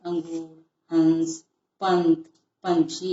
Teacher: अनुस्वार का उच्चारण नाक की सहायता से होता है